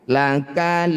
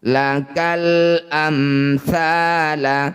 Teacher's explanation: Alif diikuti lam sukun disebut bacaan namanya izhar qamariyah atau alif lam qamariyah. Cara bacanya lam sukun baca dengan jelas. Tidak boleh diseret bunyinya.